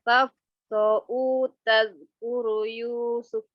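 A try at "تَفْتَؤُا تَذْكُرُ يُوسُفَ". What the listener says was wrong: Kenapa tafto'u? bukan huruf to, tapi huruf ta. Kan ta. Taf, ta'u.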